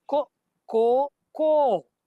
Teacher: ದೀರ್ಘಕ್ಕಿಂತ ಉದ್ದನೆಯದು, ಅದಕ್ಕೆ ಪ್ಲುತ ಅಂತ ಕರೀತಾರೆ. ಆ ಪ್ಲುತಕ್ಕೆ ಇದು ಚಿಹ್ನೆ.